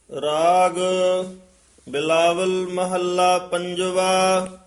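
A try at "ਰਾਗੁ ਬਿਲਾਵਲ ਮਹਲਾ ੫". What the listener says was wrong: ਬਿਲਾਵਲ ਮਹੱਲਾ ਇਕੱਠਾ ਨਹੀਂ ਕਹਿਣਾ।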